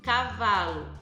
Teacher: Cavalo, a sílaba tônica é o vá, então é chamada de paroxítona.